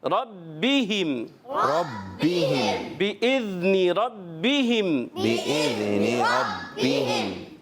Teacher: چلیں جی، بِإِذْنِ ربہم، پیارے بچوں را کو ہم نے پر رکھنا ہے، اور با حرف قلقلہ میں سے ہے، مشدد ہے، تھوڑا جماؤ یعنی رک کر ادا کریں